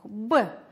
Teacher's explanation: Произносим первый звук «б». Звук согласный, звонкий, твердый.